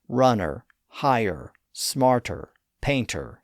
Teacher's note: Of course, if you have a non-rotic accent, like in much of England, Australia, and New Zealand, you probably don't pronounce the R sound in those words, but you still have that vowel merger. The vowel in all of those words is that generic uh sound that linguists call schwa.